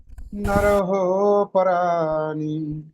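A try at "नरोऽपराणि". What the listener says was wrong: আচ্ছা, এখানে নরহ বলার দরকার নেই, হয়ের উচ্চারণ সাইলেন্ট হয়ে যাবে। হ্যাঁ, একটু ওখানে ডিস্টেন্সটাকে টানতে হবে। নরহ জায়গাটাকে ও করে দেবে না, নরোপরাণী, ও।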